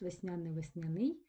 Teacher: ось слово весняний має подвійний наголос